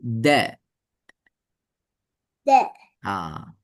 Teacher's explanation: நாக்கு வந்து எங்க வைக்கணும் இங்க பாருங்க த முன் பல்லுக்கு பின்னுதான் த நாக்கு வழி வரப்படாது விளங்கப்படாது.